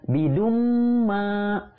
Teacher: Jadi dibacanya idgham biguna. Ya, jadi ditahan dulu 2 harokat dengan guna. Bidumma itu juga panjangnya 2 harokat.